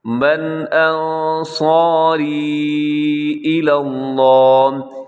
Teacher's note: انصاری میں جو مد ہے یہ بھی چھوٹی مد ہے، مد جائز